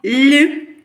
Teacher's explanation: буде приголосний бо він не співається але він буде м'який тому ми позначимо його двома рисочками далі звук і лі і